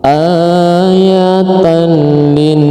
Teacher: Idgham bila gunnah itu hurufnya ada 2, lam dengan ro, jadi bacanya dimasukkan ke lam tapi nggak boleh didengungkan